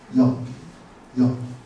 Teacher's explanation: 이라는 모음을 발음하려다가 어로 바꾸는 모음이 바로 여라는 모음입니다. 그러니까 이중 모음, 두 개를 발음하는 모음이라는 뜻입니다.